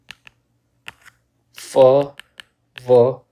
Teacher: labiodental, where lip and teeth come in contact